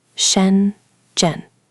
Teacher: Notice it has two retroflex sounds back to back, sh and j. Both need that curl.